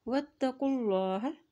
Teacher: واتقوا اللہ. اللہ کے نام سے پہلے پیش آ گیا ہے تو اللہ کا نام موٹا ادا کیا جاتا ہے. جب بھی اللہ کے نام سے پہلے زبر یا پیش آ جائے تو وہاں پر اللہ کا نام موٹا ادا کیا جاتا ہے.